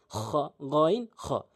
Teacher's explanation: গইন হলকের শেষ থেকে, দুটি হলকের শেষ থেকে উচ্চারণ হয়।